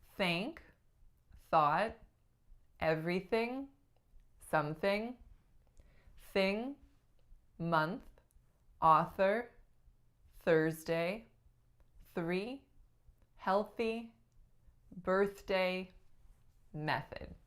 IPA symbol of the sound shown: θ